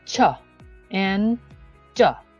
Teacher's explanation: next is African African slightly combination between stops and fricatives as the air stream is completely blocked but gradually released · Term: Affricates